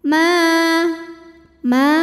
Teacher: Bismillahirrahmanirrahim ma ma hukumnya ini adalah Mad Thobi'i zahiri sebab ada Alif yang sebelumnya berbaris fathah maka cara bacanya dipanjangkan mimnya ini dua harakat